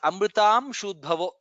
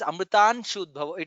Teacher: It is Amrutam Shudbhavo. I heard it as Amrutan Shudbhavo. Nakara doesn't come there.